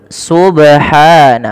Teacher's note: Kesalahan yang kedua dalam membaca qalqalah adalah menambahkan hamzah